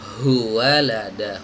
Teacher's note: Jadi langsung sepaket ya. Monyongnya itu langsung sepaket dari monyong dhammah yang sebelumnya masuk ke huruf waw